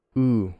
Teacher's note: it's the long tense vowel ooh is tense and it's also has this sort of off glide quality